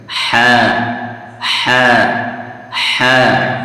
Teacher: हलक का बीच वाला हिस्सा। यानी जो हलक है उसके बीच से ये हा निकलता है।